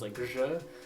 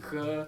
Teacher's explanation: So the jim is pronounced as je, but in Egyptian Arabic it's pronounced g, and also y, and sometimes it's just a g.